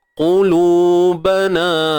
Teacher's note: qaf baris depan, lam baris depan, dua-dua ni kena muncung bibir